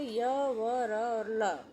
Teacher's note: अंतस्थ वर्णों का आभ्यंतर यत्न ईषत् स्पृष्ट है।